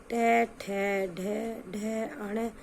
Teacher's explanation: ट वर्ग के ट, ठ, ढ, ढ, अण सभी मूर्धन्य व्यंजन होते हैं। ये वर्ण कठोर तालु के मध्य भाग तथा जीभ की उल्टी हुई नोक के निचले भाग से स्पर्श होकर उच्चारित होते हैं। ऐसी स्थिति में उत्पन्न ध्वनि को मूर्धन्य कहते हैं।